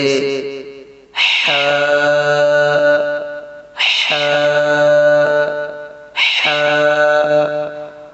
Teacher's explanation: بیچ حلق سے حا ادا ہوتا ہے